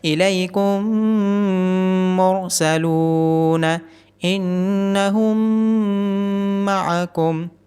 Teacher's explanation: یہاں میم ساکن کے بعد دوبارہ میم آیا ہے تو ایسی صورت میں میم ساکن کی آواز اگلے میم میں ضم ہو جائے گی اور یہاں پہ غنہ بھی ہوگا۔ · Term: ادغام